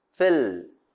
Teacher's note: the tip of the tongue is in contact with upper teeth ridge that is the partial closure in the middle of the mouth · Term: alveolar lateral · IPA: /fil/